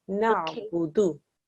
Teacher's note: The noon and the ayn join, and it must join without a jerk